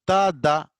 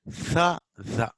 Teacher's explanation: Ta, da is alveolar, whereas tha, the is interdental or dental